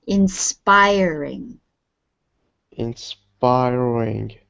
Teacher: word the stress is in the middle inspiring inspiring yes inspiring so the stress is on the middle syllable